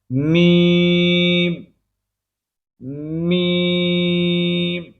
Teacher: میم کے اندر یا آتی ہے نا, اس کی آواز کو ناک کے اندر نہیں لے جانا